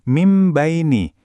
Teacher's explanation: Frasa ini aslinya min baini, tapi karena nun sukun ketemu sama huruf ba, kita membacanya jadi mim baini. Bunyi n-nya berubah jadi m. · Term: iqlab